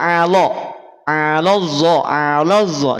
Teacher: dia berada pada yang tipis karena lam adalah huruf istifal sifatnya istifal